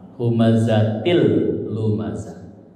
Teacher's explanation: kasrotainnya melebur ke lam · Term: idgham bila gunnah